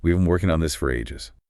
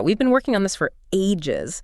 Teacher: we've been working on this for really has to collapse into almost one quick beat before you land hard on ages and stretch it out a bit with falling pitch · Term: compression